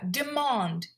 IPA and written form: dɪˈmɑːnd (Demand)